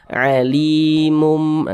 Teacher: di bagian mumnya itu kita tahan, kita panjangkan sejenak, kita gunnahkan. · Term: didengungkan